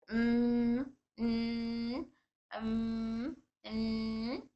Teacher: नाक के रास्ते से हवा और आवाज निकलती है। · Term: गुन्ना